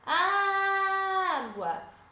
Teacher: Qual foi a sílaba que mais se arrastou? Que eu puxei mais, não foi o A? Então essa é a nossa sílaba tônica.